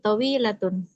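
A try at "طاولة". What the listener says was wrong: Panjang. Bukan tawilatun. To panjang. Tawilatun.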